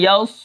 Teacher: اب یا صاد، اب یا صاد زبر یس، اب یہاں پر صاد کے اندر سیٹی ہے، جیسا کہ آپ کو معلوم ہے کہ صاد موٹے حرفوں میں سے ہے تو ہم اس کو موٹا کر کے پڑھیں گے